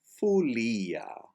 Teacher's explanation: As is the case with the letter E in a non-accented syllable, the letter O is pronounced like a U in the non-accented syllable. So folia is fulia.